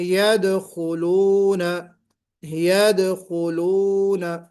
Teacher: یدخلون میں دال پر قلقلہ نہیں کیا آپ نے